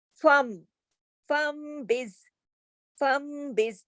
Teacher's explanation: نون کو میم سے بدل کر غنے کے ساتھ پڑھا جاتا ہے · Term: اقلاب